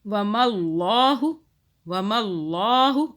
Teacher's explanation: اللہ موٹا، اللہ سے پہلے زبر آ رہا ہے